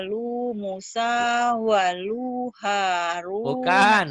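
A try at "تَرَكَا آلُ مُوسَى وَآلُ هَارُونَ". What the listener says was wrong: Bukan walu halu, wa alu. Iya, tapi lunya pendek. Taroka alu Musa wa alu Haruna. Wa alu Haruna. A-nya panjang, lu-nya pendek.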